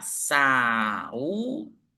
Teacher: Hiato é quando eles ficam em sílabas diferentes, como acontece em saúde e saída.